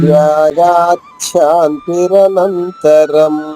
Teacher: గా పైన ఆఘాతం ఉంది కాబట్టి చాలోని చా 2 చాలు అవుతుంది.